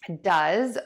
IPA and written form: dʌz (does)